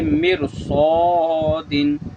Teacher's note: जैसे मिरसोदिन, रा साकिन है, उससे पहले मीम के नीचे ज़ेर असली है और रा साकिन के बाद रुफ़ मुस्तालिया भी है, मोटा पढ़े जाने वाला, तो इसी वजह से हम रा को पुर पढ़ेंगे